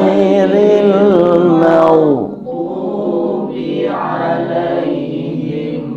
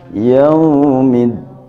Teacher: huruf Dod termasuk huruf rukhawah artinya suaranya tidak keras empuk berjalan